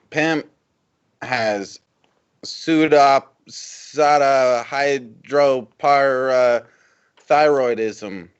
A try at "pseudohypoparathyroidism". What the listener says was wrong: Is it pseudo or super? Pseudo. It sounded like you said super the first time.